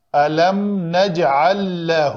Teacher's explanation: یہاں پہ مد صلہ کبریٰ کیا ہم نے، الم نجعل لہ، لام کا لام کے اندر ادغام کیا ہم نے